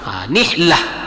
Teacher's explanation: Ta marbutah itu ketika di akhir ayat maka dia berubah menjadi ha apapun barisnya. Mau dia baris fathah, kasrah, dommah, fathatain, kasratain, dommatain, ketika berhenti maka dia berubah menjadi ha ha nihlah.